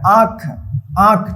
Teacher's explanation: चंद्रबिंदु का जो उच्चारण है ना मुंह और नाक की मदद से जो है ना इसका उच्चारण होता है